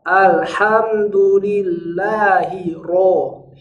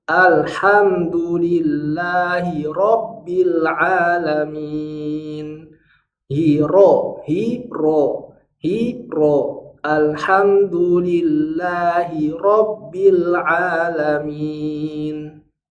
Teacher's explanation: Ro-nya ini harus dibaca tebal. Jangan berjalan dari tipis menuju tebal.